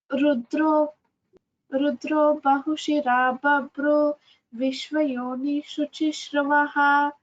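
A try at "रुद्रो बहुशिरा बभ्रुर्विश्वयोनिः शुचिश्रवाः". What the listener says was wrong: Babruhu, Rudro Bahushira Babruhu, Visarga is there. Vishvayonihi Shuchishravah, Dirga is there.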